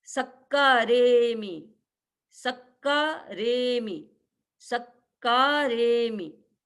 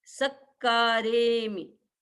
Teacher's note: क्योंकि स पर दबाव आएगा, डबल क है पीछे